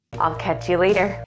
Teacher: all the words in this phrase are linked together with no pause